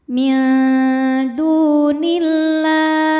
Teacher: Sebab alif lam menghadapi huruf syamsiyah yaitu huruf lam. Maka alif lam tidak kita baca atau dilewat saja ya, diidghamkan atau dimasukkan. Alif lam syamsiyah biasa juga disebut dengan idgham syamsi.